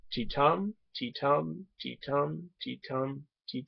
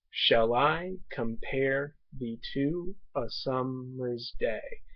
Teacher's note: would mean that there are five feet in this line each each foot is composed of an unstressed followed by a stressed syllable